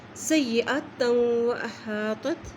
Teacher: یا کے اوپر شد ہے، سین کی زبر کو یا سے ملائیں گے